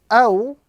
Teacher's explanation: the waw sakin, before which is the vowel fatha, gives us the sound aw, and it is known as waw lean, one of the soft letters which must be pronounced gently without any exaggeration or prolongation.